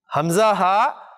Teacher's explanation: یہ حمزہ اور ہا یہ بالکل اینڈ سے نکل رہے ہیں آپ کے عام طور پہ سینے کی طرف سے